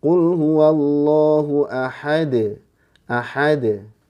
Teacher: Ya, kalau tipis berarti ke Qul huwallahu ahad. Ahad, ya, bunyinya d. Nah, nggak boleh dikasih hamzah ujungnya. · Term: qalqalah